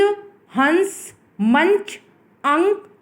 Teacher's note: नाक से सांस ज्यादा निकलती है तथा मुख से कम निकलती है